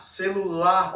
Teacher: Oxítono, quando eu tenho a sílaba mais forte, a sílaba tônica na última sílaba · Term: oxítona